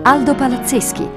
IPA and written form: ˈaldo palatˈtseski (Aldo Palazzeschi)